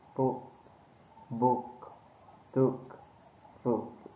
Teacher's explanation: This sound is short and relaxed.